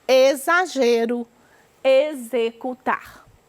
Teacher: x com som de z olha só